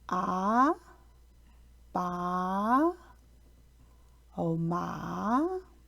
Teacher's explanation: The second tone is a rising tone that starts lower than the first tone and moves up to a high pitch.